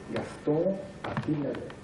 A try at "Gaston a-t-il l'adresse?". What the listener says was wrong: Oui, c'est trop vite, c'est trop vite. Il faut encore continuer